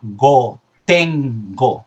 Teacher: una consonante gutural en este caso, ¿vale? Que también se llama velar porque se produce en el velo del paladar, que sería la G.